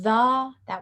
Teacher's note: we've got tongue and front of the teeth sound both voiced like th in the that